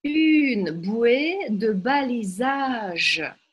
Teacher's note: И в этом одном слове мы только в конце делаем ударение. И ударение во французском не такое, как в русском.